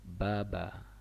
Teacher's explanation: baba ada di area bibir, pertemuan bibir atas dengan bibir bawah.